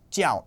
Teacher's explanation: Just note here that jiao is pronounced in the fourth tone. This is the pronunciation from the word as a noun.